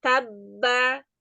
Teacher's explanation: Jadi, misalnya dia ba, jangan ta, be, ba, nggak dikol-kolahin. Tapi ba yang pertama masuk ke dalam ba yang kedua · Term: huruf yang bertasdid